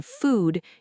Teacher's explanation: in food, your lips are more tightly rounded and pushed slightly forward, almost like you are making a small circle with your lips.